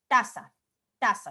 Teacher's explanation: el ápice de la lengua y la parte posterior de los dientes superiores se unen para emitir ese sonido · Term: dental